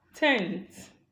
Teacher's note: n in tenth is an alveolar sound. Okay, it is an alveolar nasal, a voiced alveolar nasal. Now, this voiced alveolar nasal is occurring in the environment of the dental, of the voiceless dental, okay, the voiceless dental fricative. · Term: dentalization of alveolars